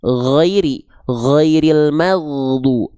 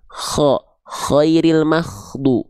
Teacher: banyak orang melafalkan huruf ghain bocor nafasnya